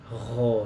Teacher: getarannya ada, cuman lembut ya, lembut, tidak sekasar ho.